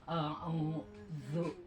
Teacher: Zal itu jadi pertemuan lidah dengan gigi atas.